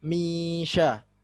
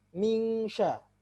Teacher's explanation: Jadi lidah tidak mengenai pangkal lisan. Pangkal lisan tidak mengenai langit-langit seperti huruf kaf. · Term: shin